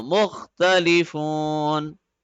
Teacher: since we are stopping, the fatha of noon will turn into sukoon.